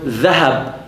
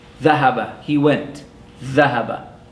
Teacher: Notice that the tongue extends between the upper and lower teeth and it vibrates. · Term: letter dha